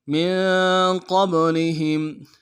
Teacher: ہا کو میم ساکن کے ساتھ ملانا ہے، میم ساکن میں غنہ کریں گے. من قبلهم فکیف فا کو نرم سے ادا کریں گے، کاف کو یا کے ساتھ ملانا ہے، یا لین بغیر کھینچے پڑیں گے، فا کو نرم سے ادا کریں گے.